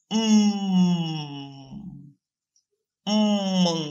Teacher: That's why they are called bilabial sounds. But when the lips are tightly pressed and there is a total obstruction of airflow, air comes out through the nose, producing a sound called bilabial nasal sound, as in mmm.